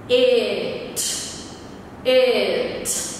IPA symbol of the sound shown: ɪ